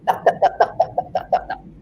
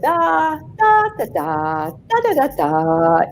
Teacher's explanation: Every syllable is said more or less even. The vowels are more or less even.